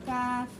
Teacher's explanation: জিহ্বার গোড়া থেকে একটু আগে বাড়িয়ে তার বরাবর উপরে তালুর সঙ্গে লাগিয়ে মধ্যখান পেঁচানো কাফ।